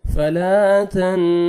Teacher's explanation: سنقرئك فلا، الف مد ہے، 1 سیکنڈ آپ نے لام کو کھینچنا ہے. فلا تن، نون ساکن کے بعد تا کو آپ نے باریک پڑھنا ہے